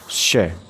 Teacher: श वर्ण जो है वो तालव्य ध्वनि देता है